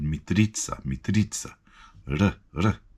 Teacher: there's a trilled R as well, which we don't have in English. But it's coming from the front of the mouth.